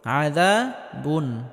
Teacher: তানবিনকে স্পষ্ট করে পড়তে হবে আযা বুন। তবে আওয়াজটা হালকা জারি রাখতে হবে কারণ নুন সাকিনে আওয়াজ হালকা জারি থাকবে। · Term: ইজহার